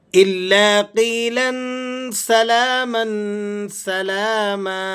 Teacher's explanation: الا قیلا سلاما سلاما، الا لام پر تشدید ہے تو آپ نے ذرا اس کو سختی کے ساتھ اور ٹھہر کر آپ نے اس کو ذرا ادا کرنا ہے